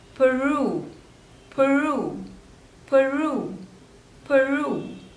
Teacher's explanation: So there are 2 syllables and the stress is on the second one.